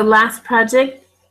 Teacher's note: the T with last, we're not normally going to pronounce